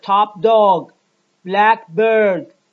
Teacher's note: we have a voiceless stop followed by a voice stop